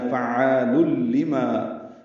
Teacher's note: فعال لما يريد، فا کو عین سے ملانا ہے اور الف مدہ ہے، تنوین کو لام سے ملا دینا ہے، لام کو لام سے ملانا ہے۔ فعال لما، ادغام کامل ہوا لل میں، لام کو جلدی پڑھیں گے